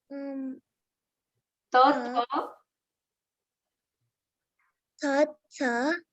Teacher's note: these are dental sounds, tongue touching the teeth. Ta, tha, Ta, ta, it's as in netra, right?